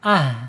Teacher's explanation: H ini ada di alhams yaitu mengalir napas ketika diucapkan dan ketika dia mempunyai posisi sukun. Ah [menghela napas] ah gitu ya.